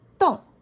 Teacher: The pitch starts high and then falls quickly. It's similar to Chinese the fourth tone. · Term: second tone